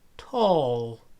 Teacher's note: we have words like tall where the characteristics of the l have started to affect the a before it